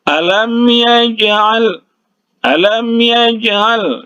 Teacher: Jadi huruf jim ini huruf qalqalah, dipantulkan cara membacanya. Alam yaj'al, alam yaj'al, ya, dipantulkan sedikit saja karena huruf qalqalah ini berada di tengah kata.